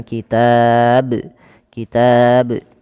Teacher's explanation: baru matikan ba dengan bacaan qalqalah, yaitu memantulkan huruf ba-nya. Maka tidak dibaca kitab saja, tapi dia harus ada pantulan kitab.